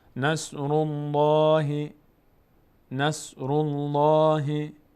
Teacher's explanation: لفظ جلاله الله چون ما قبلش ضمه آمده پر خوانده میشه دهان به سمت بالا باز میشه